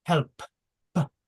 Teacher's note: That's how we know it's voiceless. That P, when you pronounce it, the throat doesn't vibrate.